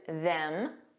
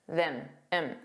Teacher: So it's just that vowel sound that sounds more relaxed and unstressed. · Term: weak and unstressed pronunciation